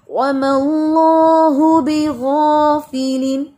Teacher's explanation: बिगा हैवी है, बिगा नहीं पढ़ना, इसमें ज़ुबान उठानी है ऊपर आपने। बिगाफिलिन अम्मा नहीं पढ़ना है इसको, ठीक है।